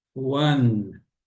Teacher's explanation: a ponta da língua deve tocar atrás dos dentes superiores lá em cima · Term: letra N